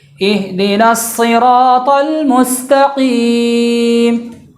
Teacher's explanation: قاف کا دھیان رکھنا ہے کہ قاف جو جڑ زبان تالو سے مل کر ادا ہوتا ہے